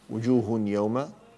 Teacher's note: وجوه يوم تنوين بعد ياء إدغام بغنة